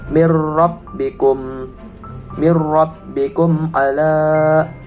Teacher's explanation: Nah, di sini terdapat hukum bacaan idgham bila gunah karena ada nun sukun bertemu dengan ro tasydid. Cara membacanya yaitu menyamarkan huruf nun sukun tersebut dengan memasukkan ke huruf yang selanjutnya.